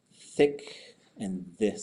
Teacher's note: So the unvoiced TH becomes an S. The voiced TH becomes a D.